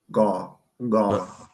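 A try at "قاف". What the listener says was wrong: No, not ga, but qa. So, like I said, it's going to come from the rear of our tongue. The rear of your tongue is going to make contact with the backside of your uvula.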